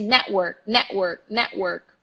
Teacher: You will hear native speakers really literally killing the T when they say words like that. They say network.